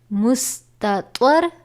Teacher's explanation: یہاں پہ تا اور طوا یہ حروف قریب الصوت ہیں جن کی آوازیں ملتی ہیں، جبکہ طوا یہ حروف مستعلیہ میں سے بھی ہے، اس لیے اس کو ادا کرتے وقت پر یعنی موٹا پڑھا جاتا ہے